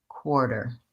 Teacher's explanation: stretching the first syllable core and being fast on the second syllable